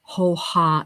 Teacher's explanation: the next sound that you make with the breath without your vocal cords is h a